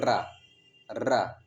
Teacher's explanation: र तो क्या है यह एक लुंठित वर्ण है